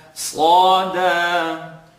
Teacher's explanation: So Sad is heavy, second part of the tongue.